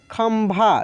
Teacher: लिखा रहता है ऐसे बिंदी ही, लेकिन वहाँ पे आधा म का उच्चारण होता है